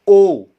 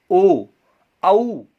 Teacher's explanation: गले से बोला जाता है और होठों की भी आवश्यकता पड़ती है। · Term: कंठ और ओष्ठ